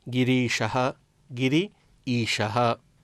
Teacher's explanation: गिरि ईशः, यहाँ ह्रस्व ईकार है और फिर दीर्घ ईकार है। ई इसका भी परिवर्तन दीर्घ के रूप में होता है